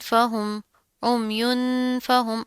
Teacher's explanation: اخفا کریں گے، یعنی کہ ناک کے اندر آواز پیدا کریں گے